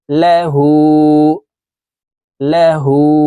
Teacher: উল্টা পেশ হু লাহু হার উপরে উল্টা পেশ আছে তাই এ হাকে উপরের দিকে ধাবিত করে ঠোঁট গোল করে এক আলিফ টেনে পড়তে হবে